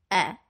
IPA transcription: ɛ